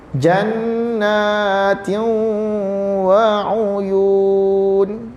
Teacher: Kita telah mengidghamkan nun dimasuk dalam waw tu.